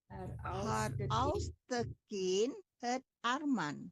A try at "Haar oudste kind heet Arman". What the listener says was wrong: Bukan heet. Bukan heet. Haar oudste kind heet, bukan het. Heet, lebih panjang ya.